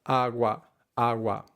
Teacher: So when we say agua, the stress does fall on the first syllable, but that doesn't mean that we say agua, agua.